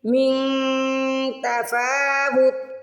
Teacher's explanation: من پہ اخفا کریں گے، نون کی آواز کو ناک پہ چھپائیں گے